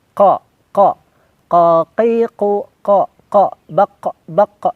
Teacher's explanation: Yang pertama di sini ada huruf qaf, di mana huruf qaf ini keluar dari pangkal lidah lisan kita dekat tenggorokan. Jadi lebih dalam.